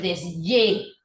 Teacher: la letra H parecía ser una letra muda, está cobrando la sonoridad de Y